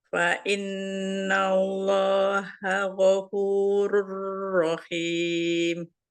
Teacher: Ro-nya tanwinnya masuk ke ro. Rur ro gitu ya. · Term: idgham bila guna